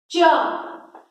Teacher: चा का उच्चारण तालु से हो रहा है